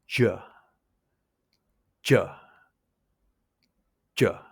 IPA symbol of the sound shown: ʤ